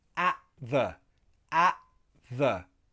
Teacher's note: my throat is closing to get that glottal sound for the T